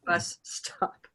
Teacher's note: It's just one long S, right?